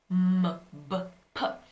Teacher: And what that means is bilabial, the sound is made when your two lips are touching, like M or B or P, M, B, P. And it's called a stop because unlike M, where you can continue the airflow through your nose, this is called a stop because at one point, the airflow is completely blocked.